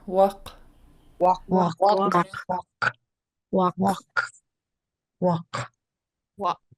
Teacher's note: ending of the word is a short high a and then underline K underline K you pronounce in the back of your throat